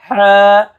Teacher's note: আমরা যখন এই যে আলহামদু বলি, এই সেই হা। হা, কণ্ঠনালীর মাঝখানে চাপ দিয়া